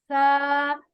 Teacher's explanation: زبان دونوں دانتوں کے بیچ میں رکھ کے نرمی سے ادا کرنا ہے اس کو، لیکن سیٹی کی آواز نہیں آئے گی